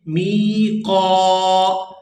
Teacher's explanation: یہاں میم کو بھی کھینچ کر ادا کریں گے اور قاف کو بھی، کیونکہ میم کے آگے یائے مدہ ہے اور قاف کے آگے الف مدہ ہے